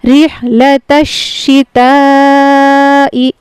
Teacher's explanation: اب یہ تا جو ہے شین میں ملے گا